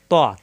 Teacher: চিনতে হবে দাল জিহ্বার আগা উপরে দাঁতের গোড়ায় লাগবে দাল ত জিহ্বার আগা উপরে দুই দাঁতের গোড়ায় লাগবে